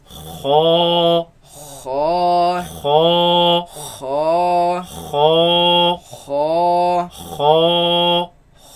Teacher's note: You can feel it in the back of the mouth. It comes from the roots of the tongue, root of the tongue against the uvula